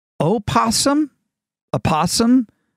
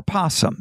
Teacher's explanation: pronounced with its first syllable either voiced or silent